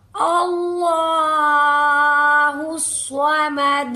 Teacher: स्वाद को पुर भी करेंगे और इस पर तशदीद भी है, मजबूती भी रखेंगे। इस तरीके से दाल पर कलकला होगा। · دیکھیں لام پر کھڑی زبر ہے، ایک الف کے برابر لمبا کر کے پڑھیں گے، اور اس سے پہلے الف پر پھر سے زبر آ گئی، اللہ کے حرف کو فل پر کر کے پڑھیں گے، سواد کو پر بھی کریں گے، اور اس پر تشدید بھی ہے، مضبوطی بھی رکھیں گے، اس طریقے سے دال پر قلقلہ ہوگا